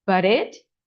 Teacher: You need to drag the sound from but into it